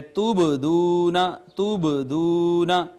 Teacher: ہم نے یہ پڑھا ہے کہ حروف قلقلہ اگر دوراننے کلمہ آ جائیں تو ان پہ ذرا چھوٹا قلقلہ کرتے ہیں، آواز لگ کے واپس آتی ہے